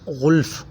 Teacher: غین بھی موٹے حروف میں سے ہے، اسے موٹا پڑھا جائے گا۔